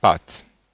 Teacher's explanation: Le son A qui est un peu plus long à cause de l'accent circonflexe